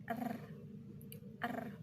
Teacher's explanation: Pembentukan dilakukan dengan lidah bagian depan bergetar melawan langit-langit mulut bagian depan. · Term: konsonan getar